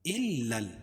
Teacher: حمزہ کو لام میں سختی کے ساتھ ملائیں گے، کیونکہ لام کے اوپر تشدید ہے ، اور تشدید والا حرف سختی کے ساتھ پڑھا جاتا